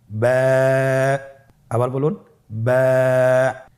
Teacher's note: বা হরফে টান হবে। এক আলিফ টান।